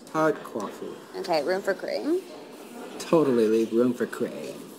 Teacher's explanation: They speak with what's called vocal fry, which is when you can hear the vibration in a raspy, low voice that drags out certain syllables.